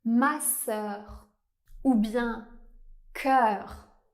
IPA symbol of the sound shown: œ